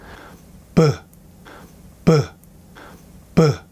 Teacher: you can hear a burst of air like a plosive sound at your lips, because air wants to come out of your mouth.